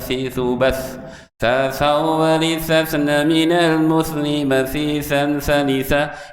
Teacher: Jadi kalau hal yang sudah biasa gampang, tapi ada huruf-huruf yang kita tidak miliki. Cara mengucapkan lidah diapit, gigi seri atas sama bawah.